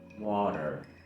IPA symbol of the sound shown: ɑː